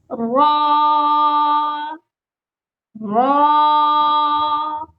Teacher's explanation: اس میں تکرار نہیں ہونی چاہیے۔ · را، را کے لیے آپ کی آواز مضبوط ہونی چاہیے۔ را بھی ہیوی لیٹر میں شمار کیا جاتا ہے، اس کو پر یعنی موٹا کر کے پڑھتے ہیں۔ آپ کو کلر سے بھی ہنٹ مل گیا ہوگا کہ میں نے سیکنڈ لیسن میں بھی بتایا کہ گرین حروف اس قاعدے میں ہیوی لیٹر کا ہنٹ دے رہے ہیں۔